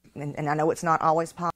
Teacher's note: so once again we got no D